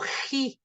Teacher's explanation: este sonido ji, que es un sonido gutural aspirado